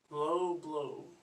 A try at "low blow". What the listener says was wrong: Again, like remember our posture we talked about, body being up, low blow. But really extend on the O's. Low blow.